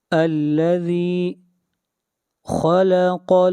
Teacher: خا اور قاف کو موٹا پڑھا جائے گا